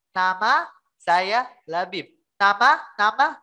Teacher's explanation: Nama, ya. Di nama tidak akan jelas karena suaranya keluarnya lewat hidung. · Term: gunnah